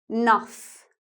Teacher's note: a word like enough becomes one syllable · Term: Shortened words